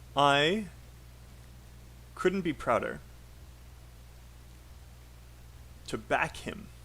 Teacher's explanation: And back here is stressed because it is a verb.